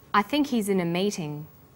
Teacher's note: the word think is stressed in this sentence and his is unstressed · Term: the H is dropped